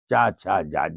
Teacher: जीभ का अगला हिस्सा और तालु के अगले हिस्से को छुवाते हुए हवा को निकालेगा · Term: च वर्ग